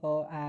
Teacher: અ, આ કંઠમાંથી કંઠ્ય કહેવાય.